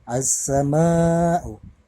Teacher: alif lamnya melebur ke dalam huruf sin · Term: alif lam syamsiyah